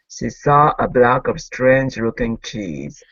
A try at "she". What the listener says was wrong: Okay, give me a good SH at the beginning. Instead of saw, she saw.